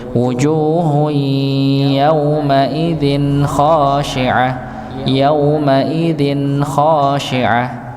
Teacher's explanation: maka tetap harus ada aliran sedikit pada dengung dikit pada nun sukunnya